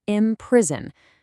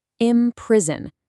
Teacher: Notice how the word breaks down into three distinct syllables: im-priz-on.